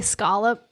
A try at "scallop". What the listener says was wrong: No. Because it's not spelled with an O after the SC. That would be scallop. Scallops.